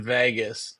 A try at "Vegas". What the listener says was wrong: How are you saying? Say Vegas again. You're like adding an e, like Vegas. Like you say it a little long. Vegas.